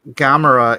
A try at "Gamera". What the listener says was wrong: It's not a long A sound.